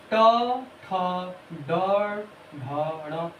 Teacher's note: इसका मूर्धा से उच्चारण होता है।